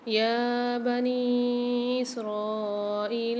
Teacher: اسرائیل میں را کو 5 الف مدار کھینچیں گے، حمزہ کے ساتھ یا ساکن آ رہا ہے، ایک الف مدار کھینچیں گے یہاں پر